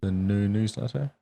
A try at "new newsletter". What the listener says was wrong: You're putting too much emphasis on the new news. New newsletter.